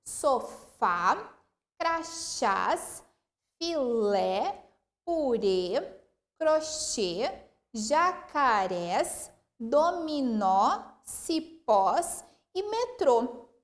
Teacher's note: É fácil detectar que a última sílaba é a pronunciada com mais tonicidade